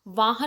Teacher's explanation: वाहन में वाह को थोड़ा लाउड बोलते हैं और थोड़ा उस पर रुकते हैं।